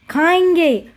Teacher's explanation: जब हम चंद्र बिंदु का उच्चारण कर रहे हैं तो हमारे मुंह और नाक दोनों से ध्वनि आ रही है, इसीलिए इसे अनुनासिक भी कहा जाता है।